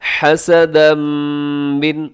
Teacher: آگے دیکھیے گا حسدا من عندی، حسدا میں حا کا خیال رکھیے گا، اور حسدم یہاں کیا ہو رہا ہے جی، ادغام ہو رہا ہے، تنوین ہے، تنوین کے بعد میم، یہاں ادغام ہوگا